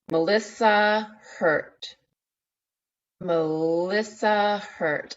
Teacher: I'm feeling that s that feels like a z in my mouth · Hurt Melissa Hurt I feel that L I feel the S I feel it move through that vowel-like consonant the r to that very intentional T